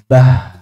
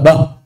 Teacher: Ha sukun dikuatkan dengan cara menyempitkan makhrajnya. Bah. Jangan terlalu longgar.